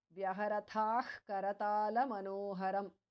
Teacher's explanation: the visarga changes to jihva mulya.